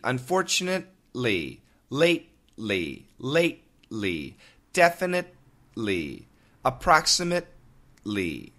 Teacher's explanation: I'm using the tip of my tongue to stop the T. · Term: stop sound